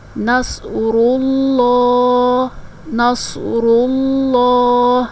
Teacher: یہ بھی تجوید کا قاعدہ ہے کہ تشدید والا حرف جو ہے وہ 2 بار پڑھا جاتا ہے، ایک مرتبہ پچھلے حرف سے، پچھلے متحرک حرف سے ملا کر، اور ایک دفعہ اپنی حرکت کے مطابق۔ یہاں پر لام 2 بار پڑھا گیا، ایک دفعہ لام کو را کے ساتھ ملا کر پڑھا ہم نے، اور ایک دفعہ لام کو اپنی حرکت کے مطابق۔